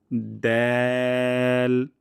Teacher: জিহ্বার আগা এবং সামনের উপরে ২ দাঁতের গোড়া থেকে পাতলা সাউন্ডে উচ্চারণ করব দ্যাল, যেন দাল না হয়ে যায়।